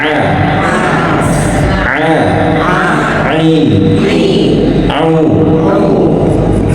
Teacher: Nah, ain ini dari tengah tenggorokan.